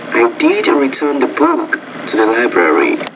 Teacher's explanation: you want to put more focus on the word did, I think, in this case, and that's a more natural type intonation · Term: focus word